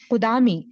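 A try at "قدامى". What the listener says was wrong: یا سے پہلے زبر، یا سے پہلے زبر ہو تو قدامی نہیں پڑھا جاتا. یہ قدامی تو نہیں لکھا ہوا نا، قدامہ. یا سے پہلے زبر ہو تو کھڑی زبر پڑھی جاتی.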